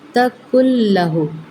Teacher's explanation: نون ساکن کے بعد لام مشدد آ رہا ہے، یہاں پہ یرملون کا قاعدہ ادغام ہوگا لیکن بغیر غننے کے۔ کل لہو، کل لہو نہیں کرنا، کل لہو۔